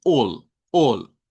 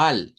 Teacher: la A, cuando está a la par de la L, cuando la A está a la par de la L, suena con una O corta.